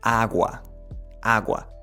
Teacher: So if you compare the G in English, it's often more strong, and in Spanish, it's softer, which means that the tongue, when pronouncing the G in Spanish, will come a little bit more forward and not staying that much at the back